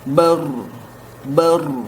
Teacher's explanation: Oke, yang kelima ada sifat at-takrir, yang mengulang, bergetar. Getaran yang berulang di ujung huruf lidah. Gimana kalau kita menganalisa dari huruf ro ya, atau dalam bahasa Latinnya huruf R, itu memang ketika diucapkan lidah kita bergetar ya.